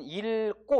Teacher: 리을 기역이 리을로 발음되는 예외적인 경우는 자, 기역으로 된 어미 앞에 섭니다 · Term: 리을로 발음하는